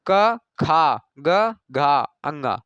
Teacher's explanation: अल्प प्राण में कम हवा मुख से निकलती है, जैसे क, खा, ग, घा, अंगा, क खा ग घा अंगा। तो इसमें ज्यादा वायु निकल रही है दूसरे और चौथे में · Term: महाप्राण